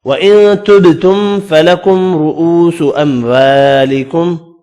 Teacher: نون کا اخفا ہوگا، با ساکن پر قلقلہ کریں گے، میم کا اظہار ہوگا